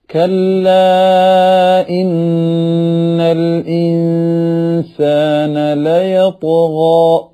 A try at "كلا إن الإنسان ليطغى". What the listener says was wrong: كلا نوكو അറബി ഉച്ചാരണ ശുദ്ധിയോടെ നമ്മൾ ഓതുമ്പോൾ എന്തൊരു ഭംഗിയാണ് അതിന്. കല്ല, നമ്മൾ കല്ല, സാധാരണ മലയാളത്തിൽ കല്ല കല്ല് എന്ന് പറയുന്ന പോലെ മലയാള കാഫും മലയാള ലാമും പറയുമ്പോഴാണ് നമ്മുടെ ഖിറാഅത്ത് അറബി അല്ലാതായി പോകുന്നത്. അപ്പൊ ഇതിൽ തന്നെ രണ്ട് ഹംസകൾ നമ്മുടെ പദങ്ങൾക്കിടയിൽ വരുന്നുണ്ട് അല്ലെ. കല്ലായിന്നൽ, അപ്പൊ കല്ലായി ആയിപ്പോവും. കല്ല ഇ അവിടെ മുഫസ്സലായ മദ്ദാണ്.